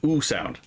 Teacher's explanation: that vowel is an oo because it's a back high vowel. So it's an oo sound.